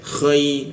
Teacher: di atas jakun dia k ada ngorok-ngoroknya seperti itu.